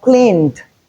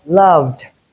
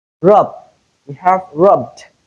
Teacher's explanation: we have the ed past tense marker realized as d because they come immediately after a voiced sound